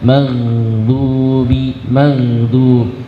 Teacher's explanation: Huruf ghain, maka ketika sukun jangan dipantulkan, bukan maghdu tapi dialirkan suaranya.